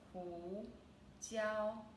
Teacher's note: It's both second tone, ning meng, ning meng. And then the second word, pepper, hu jiao, is second tone and first tone